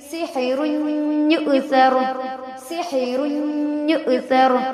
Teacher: حمزہ ساکنہ ہے، حمزہ ساکنہ کے پڑھنے میں جھٹکا ہوتا ہے. پڑھیں گے سحر یؤثر، سحر یؤثر. · را پہ تنوین ہے، تنوین کے بعد یا حروف یرملون میں سے ہے، ملا کر غنہ کے ساتھ پڑھیں گے